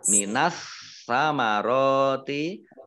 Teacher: alif lamnya alif lam syamsiyah, tidak dibaca, langsung masuk ke huruf berikutnya, yaitu huruf sa, ditandai dengan ada tasdid, langsung masuk ke huruf sa.